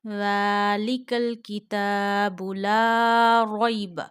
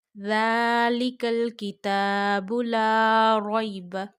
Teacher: Only you have to stretch zal, ta, and la here.